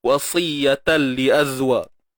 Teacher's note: Masukkan bunyi ta ke dalam lam bila gunnah. Tanpa dengung. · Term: Idgham